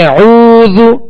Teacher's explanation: تو یہاں وہ مدہ ہے، اس کو کھینچیں گے، زال پر پیش ہے، زال کو دراز نہیں کریں گے، بغیر کھینچے بغیر جھٹکا دیے اس کو معروف پڑھیں گے